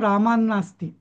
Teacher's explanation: जेव्हा आपण रामात नास्ती असं म्हणतो तो त जवळपास न सारखा उच्चार करावाच लागतो